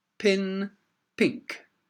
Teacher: Okay, now in this case, although it's a K at the end, it's still that sound, pink. All right, it's very difficult to say pink with the tongue at the front of the mouth.